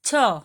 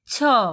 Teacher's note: छ के बाद ह बोला जाता है। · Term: विसर्ग